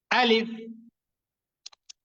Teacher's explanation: আলিফ এবং হামজাহ এই দুইটি অক্ষর উচ্চারিত হয়ে থাকে হলকের প্রথম থেকে হলক মানে হচ্ছে গলা তো গলার শুরুর দিক থেকে আলিফ এবং হামজা এই দুইটি অক্ষর · সবার শেষে কিন্তু ফ এর মত উচ্চারণ হবে ফ্যা বাতাস বের হয়ে যাবে